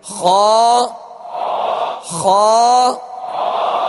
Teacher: لیکن خا کو پر کرتے ہوئے جڑ زبان کو آپ اوپر اٹھائیں گے تو خا ادا ہوگا، یعنی خا پر پڑھا جائے گا. اور اس کا مخارج کی لسٹ میں آپ دیکھ لیجئے، حلق کے اوپر والے حصے سے ادا ہوتا ہے